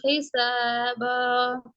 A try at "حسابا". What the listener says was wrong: இதுல 2 விஷயம் இருக்குது. ஒன்று, 3 செகண்டுக்கு நீட்ட எல்லாத்தையும் பேலன்ஸ் பண்ணுங்க. இரண்டும் ஒரே அளவுக்கு வருதாங்க. அடுத்து எல்லாமே ஒரு செகண்டே ஹிசாப ஹிசாப என்று போறது பில. ஆ, அலிஃப் உச்சரிப்பு நல்லம், ஜஸா அன் ஆத்தா அன் என்ற ஏட உச்சரிப்பு நல்லம், நீட்டுறதை பேலன்ஸ் பண்ணுங்க.